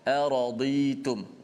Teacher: hampir-hampir pergi pada huruf dal pula apabila kita menipiskan dad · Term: huruf dad